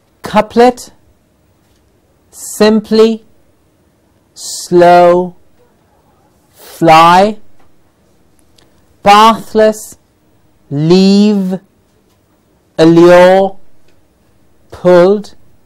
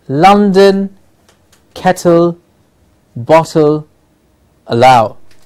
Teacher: We have the l sound. It's an alveolar sound.